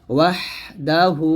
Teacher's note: এই হাউলটা পেশ হু এখানে টানবে এক আলিফ